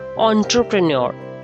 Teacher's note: last r is silent in british pronunciation